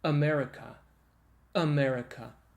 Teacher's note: it starts with the vocal folds being together and then you let them apart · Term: vocal folds together